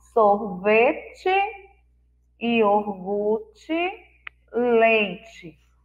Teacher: O som na última sílaba foi um I fraco, então nós escrevemos com a letra E.